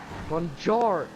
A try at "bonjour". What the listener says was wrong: Oh my, oh, the R, ouch!